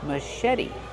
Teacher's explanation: the T is a fast D because it's between vowels. Machete. This is a machete.